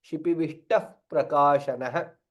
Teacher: When we join and say it, chant Shipivishtah Prakashanah, it sounds like Takara is Mahaprana, which is not. Takara is Alpaprana.